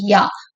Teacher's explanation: This sound is produce with the body of the tongue approaching the ஹார்ட் பேலட் அப்போ இந்த யா சொல்றப்ப என்ன ஆகும் அப்படின்னு சொன்னா centre part of · This sound is produced with the body of the tongue approaching the hard palate. அப்போ இந்த யா சொல்றப்ப என்ன ஆகும் அப்படின்னு சொன்னா, centre part of the tongue வந்து ஹார்ட் பேலட் பக்கத்துல போகும், ரூஃப் ஆஃப் த மவுத் பக்கத்துல போகும். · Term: பேலட்டல்